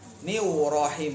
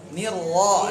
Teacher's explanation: kalau ro monyong atau bantuin bibirnya bunyinya ada tambahan w